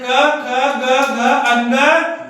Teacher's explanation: ये हमारे कंठ से बोले जाने वाले व्यंजन है।